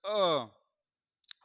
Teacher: जिह्वा के पिछले भाग से उच्चारित होता है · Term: मध्य स्वर